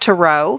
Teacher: it's pronounced tarot with the accent on the end or tarot with almost a balanced uh accent between the two